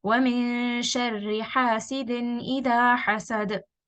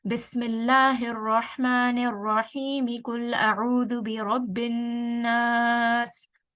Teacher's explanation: So in this case, now I am joining the Basmallah with the beginning of the surah. So here I am taking a breath at the end of the last surah, saying Basmallah and the next ayah in the same breath